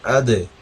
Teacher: دال کو قلقلہ کر کے پڑھنا ہے تاکہ ہمارا یہ قلقلہ ٹھیک سے ادا ہو جائے